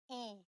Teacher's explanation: اس کا فارمولا ہے جب یا ساکن سے پہلے کسرہ آئے تو یا کی آواز کو 2 کاؤنٹس لمبا کر کے پڑھتے ہیں ای. اسے یا مدیہ کہتے ہیں.